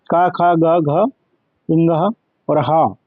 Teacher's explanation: ये सारे कंठ के द्वारा उच्चारित किए जाते हैं